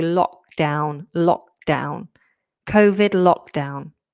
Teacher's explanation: I've taken away the K because I don't want you to do lock down. It would break up the flow.